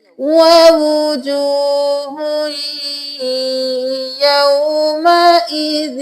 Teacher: ہا کو یا میں مدغم کرنا ہے ، وجوہن نہیں کرنا، ہوئی کرنا ہے، 2 پیش کے ساتھ